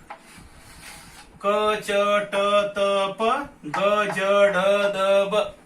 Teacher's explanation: ಕಡಿಮೆ ಉಸಿರಿನಿಂದ ಈ ಅಕ್ಷರಗಳನ್ನ ಉಚ್ಚರಿಸಬಹುದು ಅನ್ನುವ ಕಾರಣಕ್ಕಾಗಿ ಅದನ್ನ ಅಲ್ಪಪ್ರಾಣಗಳು ಅಂತ ಕರೀತೇವೆ